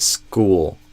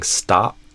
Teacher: the S before the K sound, T sound, or P sound basically neutralizes that extra air that would often come out with it otherwise